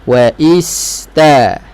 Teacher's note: Ataupun dia terlantun lah, wa istaba, terlantun sikit. Jadi jaga, liritkan, panjangkan sedikit bunyi sin. Wa ista, ta baru lepas.